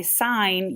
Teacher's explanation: so when you say sign you do not hear the G